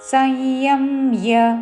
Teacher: అనుస్వారము నాసిక య ఉచ్చారణ